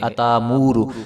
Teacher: حمزہ ساکن ہے تو اس کو جو ہے ہم جھٹکا دے کر پڑھیں گے